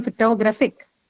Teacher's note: now the stress has changed to the third one or to put it the other way around the syllable right before the suffix IC